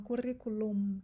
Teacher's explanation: currículo em espanhol é com m o m no final e eles falam currículo eles fecham a boca então eles falam currículo o n não fecha a boca é